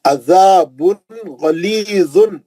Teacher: عین کو اچھا پڑھیں گے، ہاں عین مرکزی حلق سے، زا کو زبان لگا کے پڑھیں گے، مد اصلی ہے.